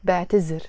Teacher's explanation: The actual verb in standard Arabic is اعتذر, and we pronounce it with a ذ. But in Lebanese Arabic, we take the ذال and we pronounce it as a ز